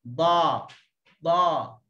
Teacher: Nak tebal kerana pangkal lidah terangkat, hujung lidah terangkat. Okey, dia jadi lekuk dekat tengah lidah, maka menghasilkan sebutan yang tebal. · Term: huruf dad